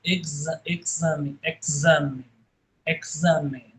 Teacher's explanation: tem o X precedido e seguido de vogal, ele vai ter som de Z, de exame, exame, exame, né?